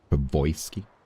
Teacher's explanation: in Russian, the stress will be on the second syllable, right? The voy.